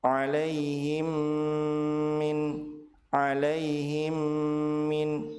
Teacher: Apabila mim sukun bertemu dengan mim, maka mim sukun dilebur ke huruf mim yang kedua dengan cara ditahan 2 harokat dan disertai dengan gunnah. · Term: idgham mimi